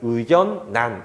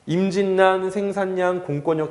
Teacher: 니은이랑 리을 중에서 니은을 조금 더 발음을 강조하고자 하게 되는 거죠. 그래서 이 친구를 의견난 이렇게 읽게 되는 거예요. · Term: 비음화